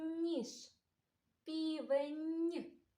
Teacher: М'який приголосний звук «н» ми чуємо в таких словах: ніж, півень.